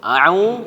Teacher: monyong bibirnya ketika baca a'u